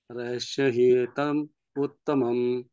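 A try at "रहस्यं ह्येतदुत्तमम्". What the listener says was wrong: रहस्यं येतत् उत्तमम्। रहस्यं येतत् उत्तमम्। रहस्यं येतत् उत्तमम्। हाँ, रहस्यं येतदुत्तमम्। हाँ जी, एतम नहीं है, एतत्।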